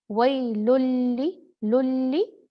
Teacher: लाम से मुदगम कर देंगे तनवीन को, और नून पढ़ा ही नहीं जाएगा क्योंकि ये है इदगाम कामिल बगैर गुन्ना।